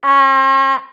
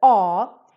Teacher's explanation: in swedish there is a difference the first thing is that the ah is a front vowel because the sound kind of comes from the front of our mouth